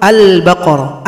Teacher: Apa itu izhar qamariah lamnya dibaca jelas kalau kita sebut Albaqarah Al kalau dibaca lamnya jelas maka itu izhar qamariah